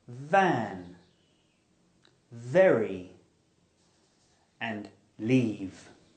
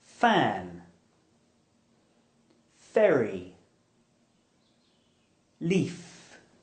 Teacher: So to make this sound correctly, your bottom lip needs to touch your upper teeth. The v is voiced and the f is aspirated.